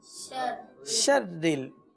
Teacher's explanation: را کو باریک پڑھیں گے کیونکہ را کے نیچے زیر ہے